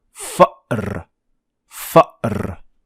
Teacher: this little stop in your throat, that is the sound, the hamza sound